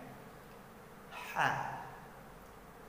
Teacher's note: Jadi harus ditekan, dilepaskan udaranya terlebih dahulu baru bunyi hurufnya. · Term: ha kecil